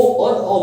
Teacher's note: कंठ और ओष्ठ का यानी गला और होठ से मिलकर जो शब्द निकलते हैं वो ओ और ओ बन जाते हैं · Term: कंठोष्ठ